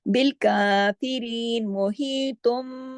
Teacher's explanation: नून की आवाज नहीं रहेगी, मीम में बदल जाएगा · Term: इकलाब का कायदा